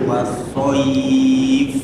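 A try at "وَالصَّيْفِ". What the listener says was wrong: Lembutkan lagi soif ya-nya.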